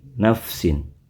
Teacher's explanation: pengucapan nafsin, bunyi tanwinnya terdengar dengan tegas dan jelas. Karena seperti itulah bunyi asal dari tanwin.